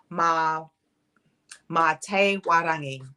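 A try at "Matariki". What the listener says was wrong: Ma, te, e, warangi. So you got all of you got them right, but there's just the e in between mate. mate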